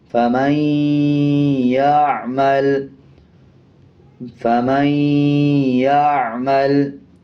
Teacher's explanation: غنہ کیا جاتا ہے اور غننے کی آواز کو ناک سے نکالا جاتا ہے